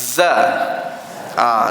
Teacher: Dia desir juga tapi dia jahar. Dia bukan hamas, tak ada angin. Dia bunyi jahar, bunyi jaring.